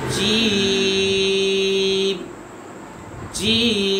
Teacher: اور مد لازم کو تین الف یعنی 6 حرکات کھینچیں گے